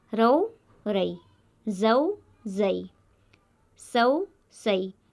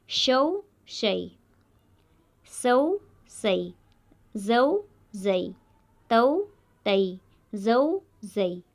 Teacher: سبھی حرف نرمی اور جلدی سے پڑھے جا رہے ہیں، کوئی بھی حرف کھینچ کر نہیں پڑھا جا رہا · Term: حرف لین